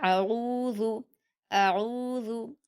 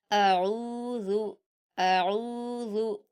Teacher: आइन का मखरज हलक से अदा होता है।